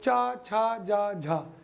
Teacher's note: ये स्पर्श के साथ संघर्ष भी करते हैं, तो इनको बोलते हैं स्पर्श संघर्षी वर्ण।